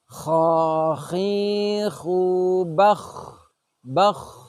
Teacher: Suara menebal itu adalah bahwa suara kita seakan-akan mengumpul di dalam rongga mulut kita. Suara menebal ini sebenarnya adalah efek dari sifat isti'la, yaitu sifat di mana lidah terangkat ke atas. Semua huruf yang memiliki sifat isti'la, termasuk ra ini, pasti diucapkan dengan suara menebal. · huruf kha ini diucapkan dengan suara menebal atau istilahnya adalah tafkhim.